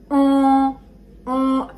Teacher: An gives us the sound on. It's very nasal. On. The whole pressure comes over here.